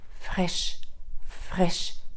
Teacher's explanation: глухий звук ф і р Фреш фреш тобто тут в нас іде хрипота далі Коли в